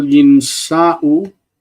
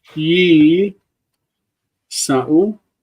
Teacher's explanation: Okay, so nasa, you think about the future, yinsa, then you make the plural yinsa'u. The noon doesn't like sitting up against another consonant, and it assimilates inside.